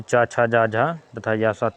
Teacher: तालव्य, जिन व्यंजनों के उच्चारण में ताल से होता है उनको तालव्य व्यंजन कहते हैं। इन व्यंजनों का उच्चारण करते समय जीहा कठोर ताल को स्पर्श करते हैं